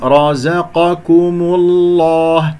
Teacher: الزاي مرققا حصلت بين مفخمين